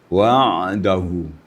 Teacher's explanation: ainnya di tengah tenggorokan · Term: Wastul halaq